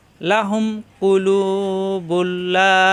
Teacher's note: এখানে লাম আসছে তাসদি দ্বরে মিলিয়ে পড়তে হবে গুন্না হবে না